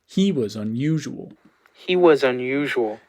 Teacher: I would put, instead of a low star on was, don't be misled by that trough, I would put an H star on he. That's more prominent, right?